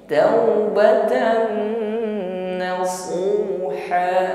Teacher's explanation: fathah tanwin bertemu dengan Nun idgham bighunah sempurnakan dengungnya taubatan nasuha na Shad dah ya jadi tebalkan pengucapan huruf Shad